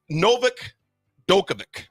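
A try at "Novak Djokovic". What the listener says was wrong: Now you pronounce the D with a J.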